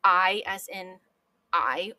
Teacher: there are actually two vowel sounds in this word that mesh together that is a dip thong and Modern English uses a lot